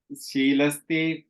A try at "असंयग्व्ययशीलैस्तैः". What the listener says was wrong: Yeah, that second line, that word sheelais, you have sheelaistaihi, right? So you put the, yeah, you put the ich sound, so sheelaistai.